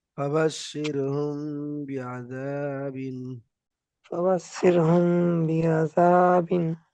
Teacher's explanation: মিম সাকিনের পরে বা আসার কারণে মিম সাকিনকে একালিফ গুণনা করে পড়তে হবে।